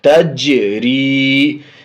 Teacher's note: جیم حرف قلقلہ میں سے بھی ہے اور جزم بھی ہے، تو جزم کی وجہ سے پیچھے سے ملا رہے ہیں، اور حرف قلقلہ میں سے اس لیے آواز چکر کھا کر کے لوٹ رہی ہے۔